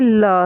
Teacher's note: पास का अर्थ है बगल या दोनों ओर। जिन ध्वनियों के उच्चारण में हम जीभ के दोनों पासों से निकलती है उसे पार्श्विक व्यंजन कहते हैं। जैसे ल है।